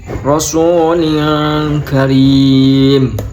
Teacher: Itu ada ikhfa hakiki karena kasrotan bertemu dengan kaf, dibaca dengung.